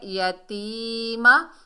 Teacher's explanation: فَأَمَّل اور میم کو لام سے ملائیں گے، جزم والا حرف ہے ہمیشہ 1 مرتبہ پڑھا جاتا ہے، اور یا ساکن سے پہلے زیر یا مدہ ہے، یتیمہ، تو ہم نے یا ساکن کو 1 الف کی مقدار کھینچ کر پڑھا، میم کے اوپر زبر بغیر کھینچے پڑھیں گے۔